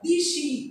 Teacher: তাহলে একারটা ইকারের প্রভাবে চেঞ্জ হয়েছে, পরের ইকারের প্রভাবে আগের একারটা চেঞ্জ হয়ে ইকার হয়ে গেছে। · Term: পরাগত স্বর সংগতি